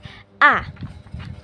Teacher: Nah, rendah bawah depan ini merupakan posisi lidahnya. Posisi lidah vokal A itu ada di bawah, rendah, dan juga lidahnya itu maju, mengarah ke gigi, tapi enggak sampai keluar.